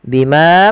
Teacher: Bima panjangkan manya dua harakat.